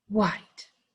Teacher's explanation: We don't hear H at all. And that's a new sound when they're together, okay?